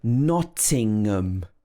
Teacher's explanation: it's not pronounced with ham it's um at the end nottingham again the first syllable is stressed